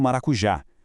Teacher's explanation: Pegando maracujá, com o pico de força cravado na última sílaba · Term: oxítona